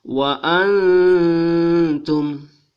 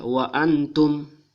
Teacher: Ah, jadi nun sukun atau biarawati mati ini bertemu dengan ta, sehingga dibaca secara samar dan dilantunkan selama dua alif